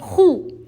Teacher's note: حلق کے اوپر والے حصے سے خو ادا ہوتا ہے۔ خو پر پیش ہے، نہیں کھینچیں گے۔